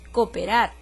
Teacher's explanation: la secuencia de dos vocales que se van a pronunciar en sílabas distintas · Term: iato